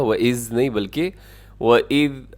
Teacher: یہ ذال ہے اسے زا نہ پڑے گا